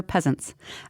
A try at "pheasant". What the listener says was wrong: Pheasant. It's pheasant. You have to say pheasant, otherwise the F isn't in there. that's what makes it hard.